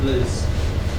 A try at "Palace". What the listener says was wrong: Palace. Notice that it's not PL, blah, blah, blah. It's PAL, P-A-L.